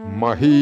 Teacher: 'മഹി' എന്നത് ദീർഘമായ 'i' ഉപയോഗിച്ച് ഉച്ചരിക്കണം